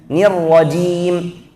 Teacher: Kalau c dengan jim satu makhraj, tapi kalau jim itu sifatnya jahar, kalau c sifatnya hamas, ya. Nirrajim.